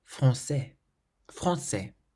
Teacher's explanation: You've got an A followed by an N and then a consonant, and that produces the nasal sound.